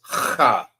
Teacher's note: The proper way to say this is ha. Sound like you hawking up some spit, or you trying to get something from the roof of your mouth.